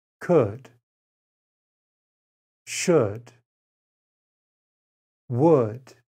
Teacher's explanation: there is no l sound in these words the l is silent